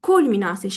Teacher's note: Fikir versəniz, mən vurğunu birinci hecada qoydum. Yəni U hecasını sizdə U saçəsini daha qüvvətli tələffüz elədim.